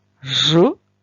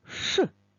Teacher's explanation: дзвінкий ж та глухий ш